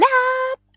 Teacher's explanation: Lap would be a little more open, a little more strong.